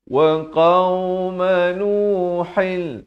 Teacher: Di sini idgham bila gunnah, masuk tanpa dengung. Asalnya ha tadwin di bawah jadi nuhin, tapi datang lam jadi nuhil.